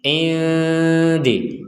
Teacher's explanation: nun sukun bertemu dal, sukunnya tidak tertulis karena memang nunnya tidak dibaca dengan jelas, tapi dibaca dengan samar. Nun sukun bertemu dalnya menjadi indi, jadi dibaca dengan samar.